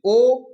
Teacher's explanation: ओठ से भी आ रही है और अंदर से भी हमारा कंठ से भी आवाज आ रही है